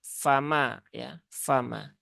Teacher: Fa dia ujung dua gigi seri atas, ya, bertemu dengan bibir bawah tapi yang bagian dalam, ya. Nah, jadi di bagian dalam situ.